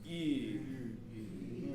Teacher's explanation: the tongue is saying E, the lips are saying oo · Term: French EU syllable